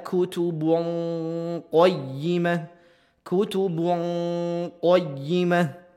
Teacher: nun mati bertemu dengan q ya didekatkan dan ditempelkan ke huruf q dengungannya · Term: bacaan Ikhfa